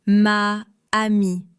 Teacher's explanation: Um das a von ma und das a von amie zu verbinden, musste ich die Luft in meiner Kehle anhalten. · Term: Hiatus